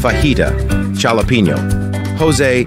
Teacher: in Spanish words it's just modified into an English H sound